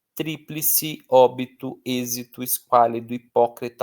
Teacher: A força delas não está na última sílaba como nas oxítonas, não está na penúltima como nas paroxítonas, está num lugar improvável na antipenúltima sílaba. Então, eu não falo triplice, eu não falo triplice, eu falo tríplice. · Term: proparoxítona